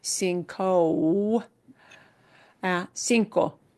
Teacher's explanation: In Spanish, that long O sound exists, but it's not blended into another vowel sound.